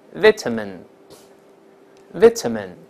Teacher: 注意这个短音，不要读▁e，▁不是▁min，▁而是▁men